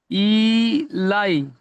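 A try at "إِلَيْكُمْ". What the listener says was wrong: ই টানাবে না ইলাই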